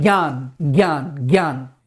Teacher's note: ज्ञान जा और या को ब्लेंड कर दीजिए आपस में, जैसे मिक्सी मिला देते हैं ऐसे ज्ञान, तो वो निकलता है ज्ञान।